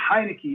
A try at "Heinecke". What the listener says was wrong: Actually, well, you said Stu right, but last name is Heinecke. So without the E on the end.